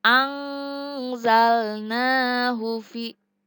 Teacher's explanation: nun mati bertemu dengan za hukumnya adalah ikfa hakiki. Cara membacanya yaitu samar-samar atau dengung.